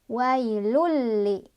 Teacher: Cara bacanya tanwin domahnya dimasukkan ke huruf lam langsung. Wailulli, tapi jangan berdengung tanpa dengungan. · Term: idgham bila gunnah